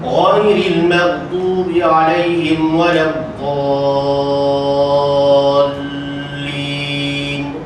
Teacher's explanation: 6 harakat gaya laju